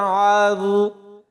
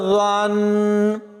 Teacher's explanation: اور اس بات کا خاص خیال رکھنا ہے کہ ضا کی جگہ زا نہ پڑھا جائے، ضا کی آواز بغیر سیٹی کے نکلے گی، اس لیے یہاں پر ضا پڑھا جائے گا، اور ضا کو نون کے ساتھ ملائیں گے تو یہاں پر غنہ ہوگا۔